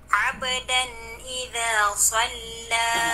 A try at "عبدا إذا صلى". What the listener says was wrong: Okay, yung kalkala mo doon sa uh, abdan ay hindi siya tabaud kundi tasadum. A, nag-incline siya sa fatha. Parang naging aba, abadan. Ab, ab, abdan, abdan.